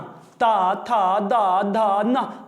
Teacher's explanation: ऐसा नहीं फील हो रहा क्या कि जीवा दांतों में दब रही है? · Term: दंतस्थ व्यंजन